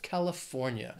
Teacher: it has four syllables stresses on that third syllable